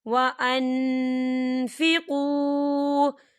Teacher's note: ان اللہ مع المتقین وَأَنفِقُوا وَأَنفِقُوا، دیکھیں وَأَنفِقُوا، یہاں پر نون ساکن ہے اور نون ساکن کے بعد فا آ رہا ہے، تو یہاں پہ ایک فا شفی ہو رہا ہے، ہم نون ساکن کی آواز کو ناک میں چھپائیں گے